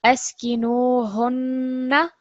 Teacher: even though we're going to stress the noon, we're not going to make the actual stroke any longer, so it's still going to be 1 second